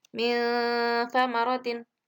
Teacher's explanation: Tetap nunnya itu harus dibaca dengung dan sedikit ditahan. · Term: ikhfa ausat